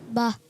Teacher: دونوں ہونٹوں کے تر حصے سے ادا ہوتا ہے